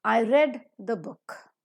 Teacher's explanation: for a non-native speakers like all of us is called as the falling tone where the pitch falls down